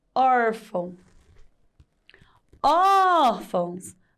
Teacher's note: A sílaba tônica na palavra órfão é or.